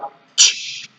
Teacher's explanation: The ch is a voiceless affricate consonant sound. It is pronounced only using the release of air.